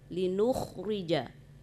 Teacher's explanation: Kemudian pengucapan huruf istiqlaqnya, huruf kha, itu harus ditinggikan ya, jangan kayak kha biasa, ya.